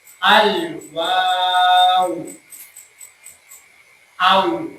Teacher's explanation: Wnya panjangin dulu baru dimatikan ke wa.